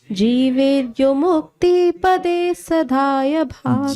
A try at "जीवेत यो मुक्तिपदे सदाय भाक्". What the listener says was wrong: जीवेत, तो हलंत मत लगाइए, जीवेत यो मुक्तिपदे सदाय भाक्।